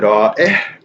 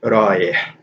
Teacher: the stop really isn't there